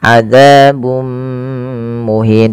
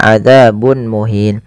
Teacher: cara membacanya memasukkan tanwinnya kepada mim dan ditahan adzabum muhin tidak dibaca adzabun muhin.